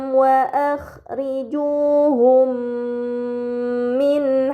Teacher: Kemudian pada kata wa akhrijuhum min haitsu terdapat mim sukun bertemu dengan huruf mim, ini dinamakan idgham mimi, maka mim sukun dibaca secara melebur dengan gunnah yang dipanjangkan